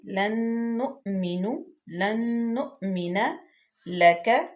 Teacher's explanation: نون ساکن کے بعد نون آ گیا، یہاں پہ ادغام حمزہ پہ جھٹکا دیں گے.